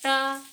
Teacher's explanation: जीभ जो है थोड़ा सा मुड़ करके मूर्धा में टकरा रहा है ना, इसलिए इसको मूर्धन्य वर्ण कहा गया है।